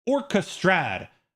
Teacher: And an orchestrad, we're stressing two syllables there. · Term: stress patterns